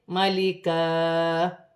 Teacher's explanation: وقف کی صورت میں دو زبر کی تنوین ایک الف مدہ میں بدل جائے گی ، ایک زبر گر جائے گا اور ایک زبر ایک الف